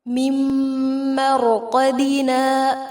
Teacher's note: من بعثنا، یہاں اقلاب ہوگا، سا کو نرمی سے ادا کریں گے. من مرقدنا، یہاں نون ساکن کے بعد میم ہے، ادغام غنہ کے ساتھ ہوگا، را پر ہوگا.